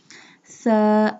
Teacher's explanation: Tha pronounced from the tip of the tongue touching the inner edges of the top two front teeth.